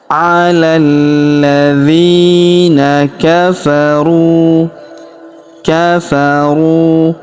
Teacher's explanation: huruf dzi kita panjangkan dua harakat karena ya sukun di depannya.